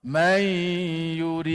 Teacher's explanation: Maka dal tu jadi qalqalah kubra. Nama dia pantulan yang besar.